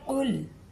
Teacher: ऑफ को हलक से और पुर करके, लाम को नरमी से